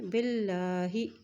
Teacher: اللہ کے نام کے پہلے جو ہے وہ زیر آ گئی ہے، تو یہاں پہ اللہ کا نام باریک پڑھیں گے